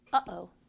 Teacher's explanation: it again but stop halfway through oh when you do that you've closed your vocal folds by bringing them together this stops the air flowing through your vocal tract · them together this stops the air flowing through your vocal tract that little silence in the middle of uh-oh is called a glottal stop because the air is stopped completely when the vocal folds close off the glottis